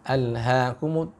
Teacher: ha di sini tengah tenggorokan wastul halaq